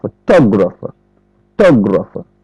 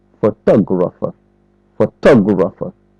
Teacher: L'accent est mis sur tug.